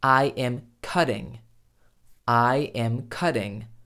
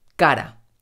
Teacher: la doble T se convierte fonéticamente en un fonema idéntico a la R simple del español, como por ejemplo, cara, face.